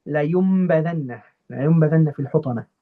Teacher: because after my noon sakina, there is a meme, there is a ba, I'll switch the pronunciation of that noon to a meme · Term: Iqlab